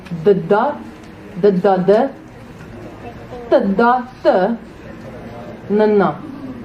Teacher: Tongue didn't change. Mouth didn't change. Just changed nasal sound.